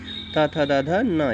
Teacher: इन्हें दंत से यानी कि दांत से पुकारा जाता दांत के माध्यम सहारा लेकर के पुकारा जाता है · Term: त वर्ग